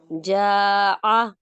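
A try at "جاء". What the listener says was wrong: No no, जा की आवाज को उठाना है और हमजा पर लाकर आवाज और सांस बंद करनी है। ठीक है, जा की आवाज को उठाना है, हमजा की आवाज को उठाना नहीं है, बल्कि हमजा पे लाके झटके से, जैसे एक चीज को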